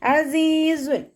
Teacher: അനിന്റെ സൗണ്ടിനെ തൊണ്ടയുടെ മധ്യഭാഗത്ത് തന്നെ കൊണ്ടുവരുക ഹംസയുടെ സൗണ്ട് ആയി പോകാതെ നോക്കുട്ടോ